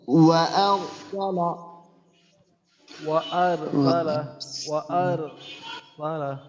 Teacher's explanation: হ্যাঁ, আমরা যে রয়ের মাখরাজ আছে আমাদের জিহ্বার আগার পিঠ তার বরাবর উপরের তালুর সঙ্গে লাগাইয়া, তো আমরা রয়ের মাখরাজ ঠিক রাখবো। এরপরে র যেহেতু আমাদেরকে মোটা করতে হবে, আমরা জিহ্বার গোড়াটা উপরের দিকে উঠাবো।